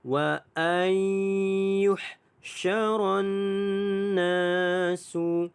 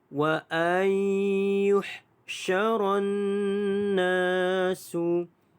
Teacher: Wa ayyuhsyara dibaca dengan idgham ma'al gunnah, dengung 2 harakat.